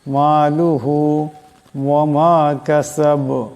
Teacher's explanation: এখানে ছোটো কাপ আছে, বড় কাফের মতন আওয়াজটা গলা থেকে আনা যাবে না। কাসাব, এখানে দমসাল্লা বা সাকিন হয়ে যাবে, আওয়াজটা টক্কর খাবে।